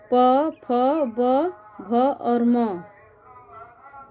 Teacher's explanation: प वर्ग के सभी ध्वनियों को उच्चारित करने में हमें ओठ की सहायता लेनी पड़ती है, यानी ओठ के स्पर्श से ये ध्वनियाँ बोली जाती हैं।